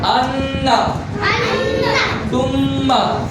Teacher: নাকের বাসি হইতে গুন্নাহ উচ্চারিত হয়